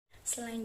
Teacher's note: bunyi vokal tinggi-rendah lidah rendah bawah gerak lidah bagian depan struktur terbuka bentuk bibir tak bulan contoh pengucapannya adalah a-line jutnya